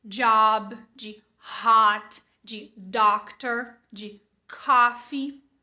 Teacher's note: e também não é um a é algum lugar no meio deixa a boca bem mais aberta como se fosse um o né mas com a boca um pouco mais aberta